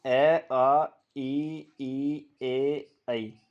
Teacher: अव्रतमुखी या अगोलित। तो इन स्वरों के उच्चारण में होठ गोल नहीं होते हैं, बल्कि फैल जाते हैं।